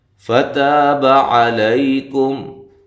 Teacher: تا الف مدہ، با کو لمبا نہیں کرنا